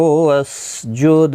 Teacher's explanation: سین ساکن کو ہلانا نہیں، دال ساکن پر قلقلہ ہوگا